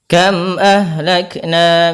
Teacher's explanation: Karena makhraj daripada huruf mim keluar daripada mim, dua bibir kita, sehingga kita namakan dengan izhar syafawi. Yang dalam membacanya harus diperjelas suara mimnya dan tidak boleh ada penahanan.